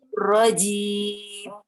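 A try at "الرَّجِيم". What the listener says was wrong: Kurangin lagi ininya, z-nya kurangin lagi. Nirrojim.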